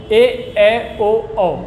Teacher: अर्ध संवृत्त स्वर ऐसे स्वर होते हैं जहाँ पर मुंह और आपका कंठ दोनों आधा आधा बंद होता है